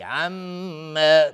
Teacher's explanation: میم مشدد دو حرکت غنه میدیم